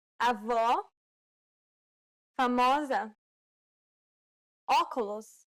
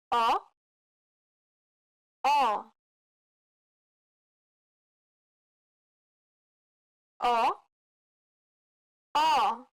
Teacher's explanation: This is identical to the O in the word hot. This sound is known as the open O sound in Portuguese.